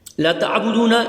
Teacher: عین جو ہے وہ حلق سے ادا ہوگا